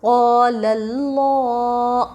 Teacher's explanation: الف سے پہلے قاف کے اوپر زبر حروف مدہ تھوڑا کھینچ کر پڑھے۔ لفظ اللہ سے پہلے لام کے اوپر زبر لفظ اللہ کے لام کو پر پڑھیں گے